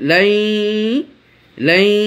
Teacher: নুন সাকিনের পর ইয়া এসেছে, নুন সাকিনটা ইয়ার মধ্যে ঢুকে গেছে এবং গুন্না হয়েছে, গুন্নার পরিমাণ একালিপ পরিমাণ।